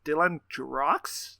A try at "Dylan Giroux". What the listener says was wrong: Dylan Giroux. the X is silent.